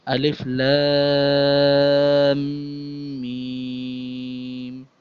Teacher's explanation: مد کی جو کیپیسٹی اور لینتھ ہے، اس کو کھینچنا جو ہے، اسٹریچ کرنا ہے، وہ کم سے کم 3 الف، زیادہ سے زیادہ 5 اور 7 الف کے برابر اس کو کھینچ سکتے ہیں